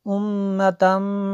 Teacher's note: میم شدد ہے غنہ کیا